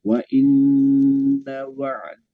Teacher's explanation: ketika nunnya ditasdid itu ditahannya tiga ketukan Pak ya.